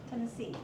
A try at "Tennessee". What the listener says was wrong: Try to enunciate the E sound more, the N sound more, the N and the S, and then all of this becomes very short and unimportant.